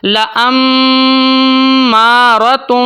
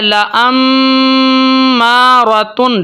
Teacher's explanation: اب میں مثال دیتا ہوں میم کی، جیسے کہ یہاں پہ دیکھیں، ان النفس لامارۃ، میم کے اوپر تشدید ہے تو ہم میم کے اوپر تھوڑی دیر کے لیے آواز کو روکیں گے، ٹھیک ہے، ہولڈ کریں گے ایک الف تک 2 سیکنڈ تک، لامارۃ، ٹھیک ہے، لامارۃ، ٹھیک ہے۔ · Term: غنہ زمانی